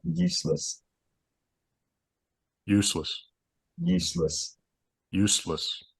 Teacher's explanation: I'm trying to go backer than I normally would on the ooh